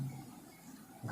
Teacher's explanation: घा हमारा घोष है। और क्या है, देखो घा हमारा महाप्राण है